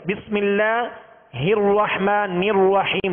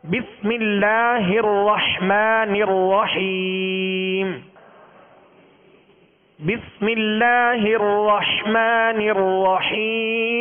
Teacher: الرحمہ یعنی را پر اصل میں زبر ہے، اصل میں زبر ہے دونوں را پر. تو را کو پر یعنی موٹا کریں گے مگر ہونٹوں کو گول نہیں کریں گے. بسم اللہ الرحمن الرحیم یوں نہیں پڑھیں گے، بلکہ بسم اللہ الرحمن الرحیم.